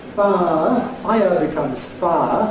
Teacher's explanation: still two syllables, but that can then be compressed into one syllable, far. It's a new diphthong, far, far. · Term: compression